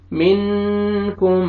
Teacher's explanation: اور یہاں پہ آپ دیکھیں نون ساکن کے بعد حروف اخفاء میں سے کاف آ رہے ہیں، یہاں پہ آپ نے اخفاء کرنا ہے، ناک میں آواز لے کے جائیں گے